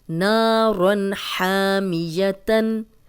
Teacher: الف مدہ ہے، آگے تنوین ہے، تنوین کے بعد حروف حلقی ہے، ہم غنہ نہیں کریں گے